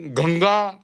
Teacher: संग में भी गंगा में भी जैसे बोलेंगे तो नाक से ही निकल रहा है वो अंग आ ही नहीं रहा है अंग आ नहीं पाएगा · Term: नासिका वाला ही उच्चारण